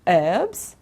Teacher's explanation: in american english they say herbs okay don't pronounce the h